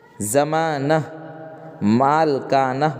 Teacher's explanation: ہائے مختفی وہ ہاں ہے جو تلفظ میں نہیں آتی ہے اور صرف ما قبل کی حرکت کو ظاہر کرتی، ما قبل یعنی اس سے پہلے والے حرکت کو ظاہر کرتی، جیسے دیکھیے پروانہ، آخر میں ہاں ہے اور اس سے پہلے کیا ہے؟